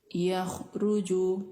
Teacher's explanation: खा साकिन है और इसकी आवाज गले के ऊपरी हिस्से से आ रही है और यह भी पुर हर्फ है।